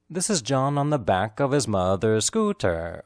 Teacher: The emphasized words are John, back, mother's, and scooter.